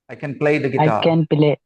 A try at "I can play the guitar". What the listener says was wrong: no stress on can don't put any stress say it fast say quickly and say it without any stress